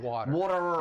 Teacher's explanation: >> And it often says when the t say two vowel sounds like in the word water. You don't hear a true T, you hear a flap T.